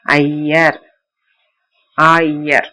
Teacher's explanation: அகர இகரம் ஐகாரம் ஆகும். அகரத்தையும் இகரத்தையும் சேர்த்து சொல்ல அவை ஐகாரம் போல ஒலிக்கும். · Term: ஐகார போலி